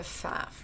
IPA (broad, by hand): fæf